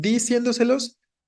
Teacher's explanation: Si dices diciéndoselos, está bien extraño, ¿no? Le estás dando fuerza a ese di, lo cual no tiene ningún sentido